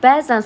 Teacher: Bəzən sözündə ə səsi həm uzanır, həm vurğu qəbul edir. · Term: səs uzanması və vurğu